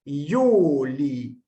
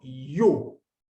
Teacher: Esta I sí forma una sílaba con la vocal siguiente. Yu, no es I, U, sino Yu. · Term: valor consonántico